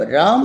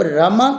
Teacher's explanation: जब राम शब्द का उच्चारण करते हैं तो म के अंत में अ ह्रस्व सुनाई देता है। जब रमा कहते हैं तो इसमें आ दीर्घ स्वर सुनाई देता है।